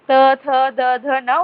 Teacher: दात पे टच होती है जीभ हमारी इनको बोलते वक्त